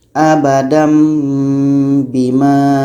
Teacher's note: ini ini adalah tanwin bertemu dengan bang tadi maksudnya adalah menukarkannya menukarkan bunyi tanwini kepada bunyi mim dan kita baca dengung